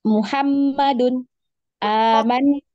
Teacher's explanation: jadi agak lebih panjang ya karena dia termasuk ke dalam gunnah yang paling sempurna, ya yang paling panjang kadar gunnahnya dibanding yang lain ya.